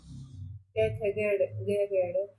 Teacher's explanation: जो क वर्ग होता है वो सारा ही कंठ से बोला जाता है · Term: कंठ धवनी